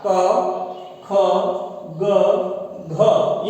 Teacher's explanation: ये हवा अपनी जो है वो इस कंठ के जो वाग यंत्र है इससे स्पर्श करके बाहर निकलती है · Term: क वर्ग